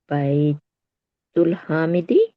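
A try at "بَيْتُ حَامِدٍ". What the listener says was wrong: तुल तो है ही नहीं, यहाँ मिलाया तो है ही नहीं। हाँ, में दिन अभी चूंकि अलिफ लाम नहीं आया तो हम दो जेर लगाएंगे,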